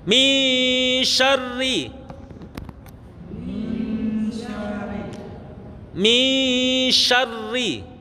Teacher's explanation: Pada saat mendengungkan suara nun niku, lidah kita sudah berada makhrajnya shin.